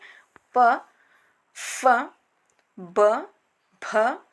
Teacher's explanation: ವಿಧವಾದಂತಹ ಅಕ್ಷರಗಳಂದರೆ ಓಷ್ಠ ಅಕ್ಷರಗಳು ಓಷ್ಠ ಓಷ್ಠೆ ಅಂದರೆ ಇಲ್ಲಿ ತುಟಿ ಎಂದರ್ಥ ಅಂದರೆ ತುಟಿಗಳ ಸಹಾಯದಿಂದ ಉಚ್ಚರಿಸಲ್ಪಡುವಂತಹ ಅಕ್ಷರಗಳೆಲ್ಲವೂ ಓಷ್ಠ ಅಕ್ಷರಗಳಾಗುತ್ತವೆ